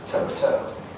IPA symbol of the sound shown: təʊ